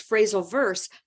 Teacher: And she didn't say verbs. She said the S, but not the B sound. And so what I heard was phrasal verse.